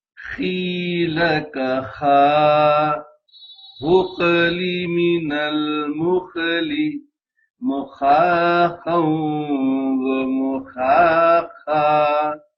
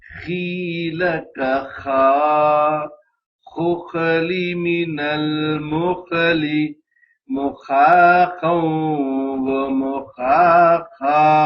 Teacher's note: خیل کا خا غقلی من المخلی مخاخا ومخاخا۔ خا کی ادائیگی میں گلا کھرکھرا ہوگا